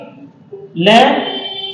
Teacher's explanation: ले को आप बोल के देखना, ऐसा लगेगा कि ले एक तो क्या करेगा, उच्चारण में जीवा जो होगी आपकी मुसुड़े को टच करेगी और हवा का वेग आसपास से निकल जाएगा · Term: पार्श्विक व्यंजन